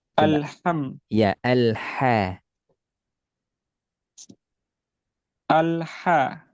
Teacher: lebih desah tenggorokan tengah